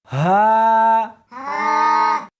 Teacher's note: اس حرف کو سینے کے اندر سے نکالنا ہے